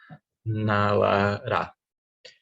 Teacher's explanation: E são todas alveolares.